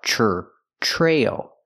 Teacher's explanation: the TR makes a chch sound like chicken plus the r TR Trail then the long a try and then the dark